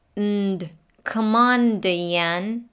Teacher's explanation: we go into position for the N with the tongue, N, but we don't release it. Instead, we go straight into the D. · So stopped N, released D.